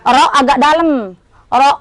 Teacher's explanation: Ro di mana makhrajnya ro? Antara ujung lidah dan perut lidah.